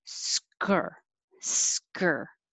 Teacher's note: I'm pulling my tongue back for the R after I make my K. Sk. I can make my S and my K at the same time. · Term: SKR combination